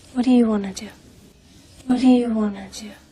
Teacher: want to would sound like wanna wanna when spoken fast